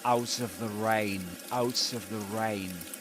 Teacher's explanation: he links the final consonant in out to the initial vowel sound in of, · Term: catenation